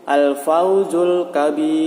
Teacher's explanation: Kemudian sebelum huruf ya bersukun itu ada huruf yang berharokat fathah atau kasrah. Nah, cara membacanya itu dipanjangkan 6 harokat sebelum masuk pada huruf ra-nya